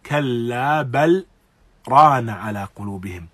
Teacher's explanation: lam as-sakina meets ra and there is no assimilation, there is no idgham or merging of the letters